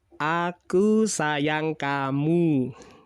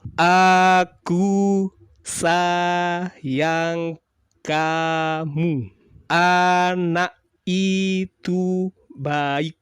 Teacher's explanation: Jadi A-nya ringan, tidak ada tekanan sama sekali. Anak itu baik. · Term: alfabet A